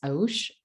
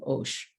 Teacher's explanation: At the beginning of stage two, the form has shifted to osh. And so that au diphthong became o during the first set of sound changes. As of right now, that stage two form matches the modern form of the word.